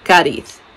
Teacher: Cádiz, the emphasis is on the first. And if you're a Spaniard, the zetas will be zetas.